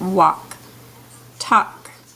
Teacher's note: you don't hear the l it's silent